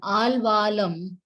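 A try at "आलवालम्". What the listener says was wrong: Al iti nabhavati tatra halanta nasti. Alavalam.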